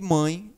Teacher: ditongo nasal vai ser isso um som fechado um som onde o som vai sair pelo nariz